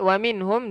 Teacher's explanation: nun mati ada tanda mati, hukumnya izhar halqi. Jelaskan nun.